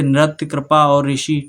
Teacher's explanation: अगर आप उच्चारण के आधार पर देखेंगे तो रा की ध्वनि सुनाई देती है